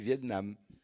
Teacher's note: dans vietnam on étrangle le t